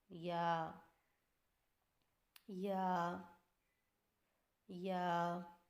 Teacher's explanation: یا کی ادائیگی میں زبان کے درمیان کو تالو کی طرف بلند کرتے ہوئے باریک آواز میں پڑھیں